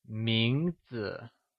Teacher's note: Mínɡzi is pronounced with a mid rising tone